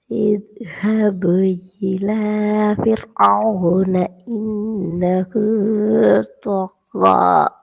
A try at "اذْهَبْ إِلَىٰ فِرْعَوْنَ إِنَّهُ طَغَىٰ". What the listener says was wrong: அது கொஞ்சம் இன்னும் ஃபாஸ்டா வந்து சேரணும். இன்னும் ஃபாஸ்ட்டுக்கு பழகணும்.